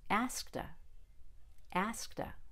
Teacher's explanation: before a vowel when we're linking it to the next word that starts with a vowel the Ed becomes a fast D again not a t asked by itself but asked with a fast D when linked